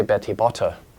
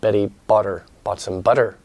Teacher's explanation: By the way, you notice that the T in American English, if it's before a vowel sound or a syllable with no stress, no stress, it's a bit more like a duh